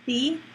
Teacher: So in sum, to repeat the rule one more time, say the with the schwa sound, the, before words beginning with a consonant sound, and say the with the sound E in it that you have to smile a little bit to make, the, before words that begin with a vowel sound.